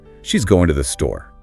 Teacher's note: With a falling intonation at the end, it's a straightforward statement. But if you add a rising intonation, it becomes a question.